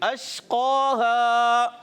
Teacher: شین کی ادائیگی کلیئر رکھیں, قاف حروف مستعلیہ سے موٹا ادا کریں گے